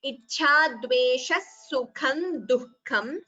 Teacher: Note the pronunciation of the word duhkham. The ha should be heard between du and ka.